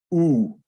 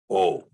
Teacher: in the VAV this is usually going to be pronounced ooh yeah but it can also be pronounced oh